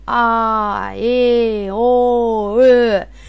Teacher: Жаак кең ачылышы менен жасалган үндүүлөр кең үндүүлөр.